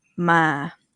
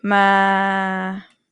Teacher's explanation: Midtone start from number three and then you go a little bit lower at the end.